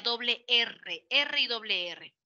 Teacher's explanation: el aire de los pulmones al salir hace que la lengua vibre